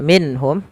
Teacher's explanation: ada nun mati bertemu ha, ini kita namakan dengan bacaan izhar, harus dibaca dengan jelas suara nunnya